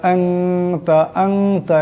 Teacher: ওয়ালা ইয়াগফিরুজ যুনুবা ইল্লা আনতা, আনতা, এখানে নুন সাকিন, নুন সাকিনের পর তা আসছে, ইকফা হয়ে যাবে, ইকফার একারে পরিমাণ গুণনা হবে